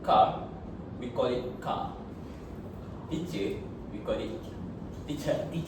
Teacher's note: the Malaysian English has the non-rhotic accent, which is R at the end of the word, often not pronounced, and usually it is pronounced as H.